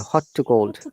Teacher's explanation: one t should be removed for our easy pronunciation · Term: one t is gone